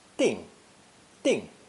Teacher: we have a new ideogram pronounced fourth tone